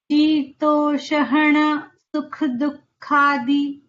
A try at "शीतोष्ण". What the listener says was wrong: No, it's not a full sh. Shitoshna.